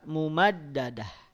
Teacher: bunyikan ha pada huruf terakhir ta marbutah apapun harokatnya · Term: waqaf pada ta marbutah